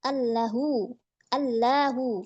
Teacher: Nah, di sini hamzahnya ya itu dihilangkan. Jadi lamnya itu diidghamkan dilebur menjadi allahu kan hamzahnya itu dihilangkan